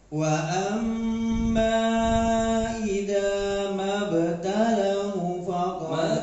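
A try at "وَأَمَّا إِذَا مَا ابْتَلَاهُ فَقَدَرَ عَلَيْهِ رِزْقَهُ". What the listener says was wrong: Mabtala. Talanya banyak dua. Mabtala, jangan mabtal, enggak.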